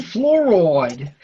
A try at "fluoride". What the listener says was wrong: No, it's not fluoride. It's fluoride. It's just one word, just 2 syllables. Don't add the extra syllable.